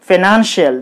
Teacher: The syllable nan should be highlighted. It should be pronounced with higher force.